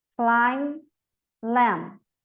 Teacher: MB, não pronuncio o B, então. Com, climb, lamb.